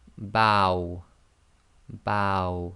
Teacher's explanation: with the waw, with the sukoon, i.e. waw sakin, the sound it will give is ow. Ow. So it's a and then the wa sound, ow.